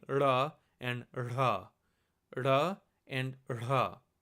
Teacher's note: instead of actually having true contact with the roof of the palate to get da and da, you just kind of flick it off by saying ra and ra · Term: weak retroflex letters